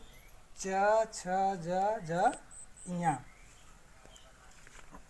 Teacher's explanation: च वर्ग का उच्चारण स्थान जो है तालु। इसके अंतर्गत वर्ण जो है च, छ, ज, झ, ञ।